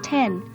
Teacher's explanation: The d letter denotes an explosive or stop sound similar to a lax t sound